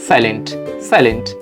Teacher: থেকে যখন আমরা অ্যাডভান্সে যাব ট টাকে দেখব তখন এখানে কিন্তু ট এর টাকে একটু হালকা ঠ টাইপ উচ্চারণ করা হয়